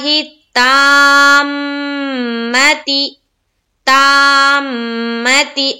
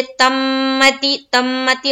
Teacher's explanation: کیونکہ یہ جو تا ہے اس کے بعد دیکھیے کیا ہے، الف ہے، تو ہمیں الف مدہ کرتے ہوئے میم میں ملانا ہے